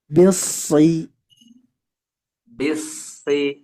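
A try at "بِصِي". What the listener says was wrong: Nah, ini baru setengahnya, Pak. Naik lidahnya baru setengahnya, tapi ada tebelnya. Hanya saja tidak maksimal. Dimaksimalkan lagi.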